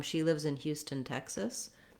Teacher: If you're running it together, she lives in Houston, Texas. The main stress is going to be on the tech syllable of Texas.